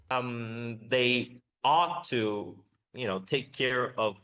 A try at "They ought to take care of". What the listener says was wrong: They ought to take care of. Again, stress timing is off there. They ought to take care of, and that the stress should be on the thing that comes after of, not on of.